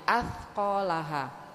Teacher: kalau ngucapin sa, ujung lidahnya dikeluarin dikit, digigit